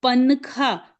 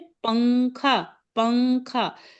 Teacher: ठीक है, जैसे उन्होंने एग्जाम्पल दिया है, अपन बोलते ना पनखा, पनखा नहीं कहते ना, पन, पन बोलने में नून को ऊपर तालू पे नहीं लगाते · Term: इख्फा